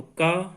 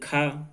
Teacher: इसके अंतर्गत देखो का और फिर खा, वो पहुंच गया महाप्राण में। ये का कहते हैं तो हमारी श्वास वायु कम निकलती है, और जब खा कहते हैं उच्चारण में तो श्वास वायु अधिक निकलती है